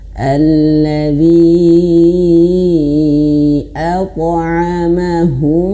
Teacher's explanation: Huruf ta yang qalqalah itu harus pantulannya ke tebal, ke o. Ke o ya. Jadi meskipun sebenarnya bukan ke o ya, tapi mirip ke o, tapi dia pangkal lidah naik.